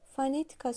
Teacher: fonetika sözündə düşür ikinci hecayə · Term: vurğu